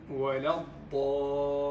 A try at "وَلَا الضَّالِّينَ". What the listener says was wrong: نعم، ينبغي أن تتخلص من الغنة، الغنة المصاحبة للياء، للمياه المادية. طبعا اللام من حروف البينية، يعني فيها شيء يسير من امتداد الصوتي هنا، فنقول ولا الضالين. أحدث شيئا ما عند اللام.